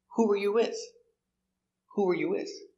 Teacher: Stress the important word. Who, the question word.